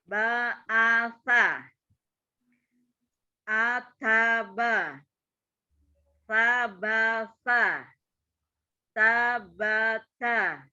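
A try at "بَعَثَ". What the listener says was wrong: Ya, tidak diayun, tanya sama dengan yang terakhir. Yang pertama dan terakhir harus sama ketukannya.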